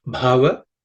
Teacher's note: It has to be aspirated. So it should be bha with a little extra air.